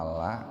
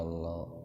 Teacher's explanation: Lam yang pertama itu dibaca tarqiq. La. Illallah. Kenapa? Karena sebelum lam ada kasrah itu, Pak. Lam yang kedua dibaca tafkhim.